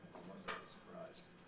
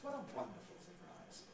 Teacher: by using the high prehead and creating that pitch jump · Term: unstressed high prehead